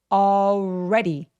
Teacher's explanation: already 할 때 R 발음은 입술을 쭉 내밀는 발음이라서 already 해 주시면 되고요. D가 또 굴러가는 소리가 나잖아요. 모음 사이에 낀 D라서 그래서 굴러갈 수 있어요.